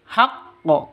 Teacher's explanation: qalqalah kubro, karena ada di akhir kalimat.